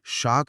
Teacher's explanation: श बोलने के लिए जीभ को तालू के पास ले जाकर दबाव बनाना पड़ता है। गर्म हवा निकालनी पड़ती है। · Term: ताल्लव्य श